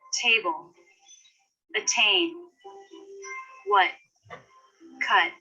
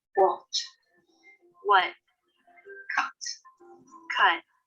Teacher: in American English, they tend to drop the T in the final position